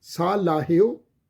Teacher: ਹਾਹੇ ਦੀ ਜਿਹੜੀ ਔਂਕੜ ਦੀ ਮਾਤਰਾ ਹ ਇਹ ੳੇ ਨੂੰ ਹੋੜੇ ਦੀ ਮਾਤਰਾ ਦੇ ਰੂਪ ਵਿੱਚ ਉਚਾਰਨ ਹੋਵੇਗੀ